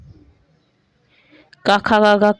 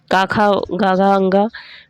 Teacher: क ख ग कंठ से होता है।